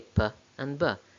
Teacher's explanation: So p and b are bilabial, produced by closing both lips completely and then opening them to release the air.